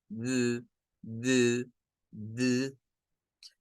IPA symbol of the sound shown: ð